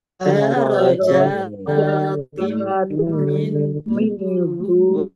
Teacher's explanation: Darajatim jim fathah berdiri, mat tabi'i panjang 2 harokat. Kasroh tanwin bertemu dengan huruf mim, bacaan idgham bi gunnah, masuk dengan mendengung, yaitu masuk ke huruf mim dan dibaca mendengung. Mendengung mim ditandai dengan mimnya ada tasdidnya.